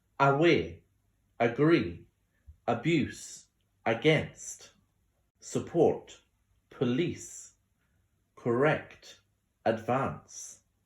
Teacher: schwa on the first syllable